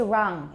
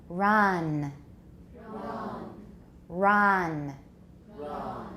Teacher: We don't have friction in English. We've got rounding. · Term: English R